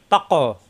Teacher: কফ সাকিন কলকলা জিহ্বার গোড়া থেকে